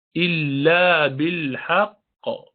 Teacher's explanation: قاف قلقلہ کا ہے، ساکن قاف ہے